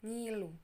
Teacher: NY, N dari hidung jelas ditandai dengan N, seperti pada kata nyala. NG atau eng dari hidung jelas ditandai dengan N juga, seperti pada kata ngilu.